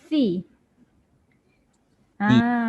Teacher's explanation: kalau huruf sa lidah berada di gigi, kalau dia baris bawah pun lidah tetap berada di gigi.